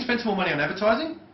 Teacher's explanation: That upward tonality, what does that imply? It's a question?